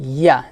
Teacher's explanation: জিব্বার মধ্যখান উপর তালুর সঙ্গে লাগাবেন, তারপর উচ্চারণ করবেন।